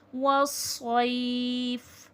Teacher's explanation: صاد کو موٹا کر کے پڑھیں گے کیونکہ حرف مستعلیہ ہے، موٹا حرف ہے، اور صاد میں سیٹھی کی بھی آواز آئے گی، موٹا بھی ہوگا اور سیٹھی کی بھی آواز آئے گی، والصیف۔